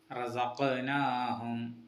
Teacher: തുടക്കത്തിലെ റസഖനാഹും എന്നതിലെ തുടക്കത്തിലെ റ അതൊന്ന് കനപ്പിച്ചോതണം. കാഫ് എന്ന അക്ഷരത്തിന് സുക്കൂൻ വരുന്നു. കൽക്കല അക്ഷരമായതുകൊണ്ട് ഇവിടെ ശബ്ദം തട്ടി പ്രതിഫലിപ്പിക്കണം.